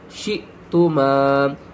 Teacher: حمزہ ساکن ہے، جھٹکے کے ساتھ پڑھیں گے